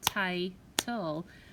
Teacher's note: So when I clap that out, title, you hear the I where we clap, and that's a long I sound